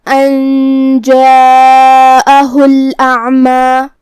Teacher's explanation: عین کو ہم حلق کے درمیان والے حصے سے ادا کریں گے جو کہ اس پہ جزم ہے تو ہمیں حرف العین کو ظاہر کرنا ہے. آخر میں مد طبیعی ہے تو ہم اپنی آواز 2 مد کے برابر لمبی کریں گے